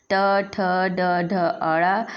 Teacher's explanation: इनका उच्चारण स्थान मूर्धन्य से होता है। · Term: मूर्धन्य वर्ण